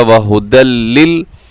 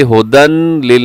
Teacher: وہدی لل، اسے ہدن لل نہیں پڑھنا، یعنی نون کی آواز اس میں بالکل ختم ہو جائے گی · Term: ادغام بغیر غنے کے